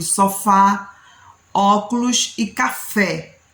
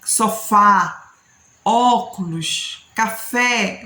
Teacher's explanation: toda vez que você vai falar o som é aberto sofá óculos café você acaba tendo essa entonação de voz aumenta